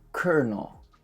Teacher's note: The L is actually an R, and the second O is not pronounced.